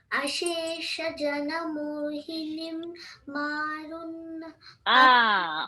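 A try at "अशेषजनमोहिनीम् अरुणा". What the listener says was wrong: Maruna no, maruna. Ashesha jana mohini, ni, hold it longer. Maruna, so, it is Ashesha jana mohini, aruna. But ni you drag and keep the maruna.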